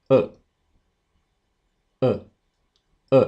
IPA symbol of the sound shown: ʊ